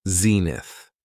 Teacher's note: It has two syllables and the stress is on the first syllable.